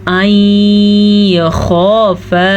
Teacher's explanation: این خافا نون ساکن کے بعد یا تنوین کے بعد حروف یمون میں سے کوئی حرف آ جائے تو دونوں کو آپس میں غننے کے ساتھ ملا دیتے ہیں. اسے کہتے ہیں ادغام بالغنہ.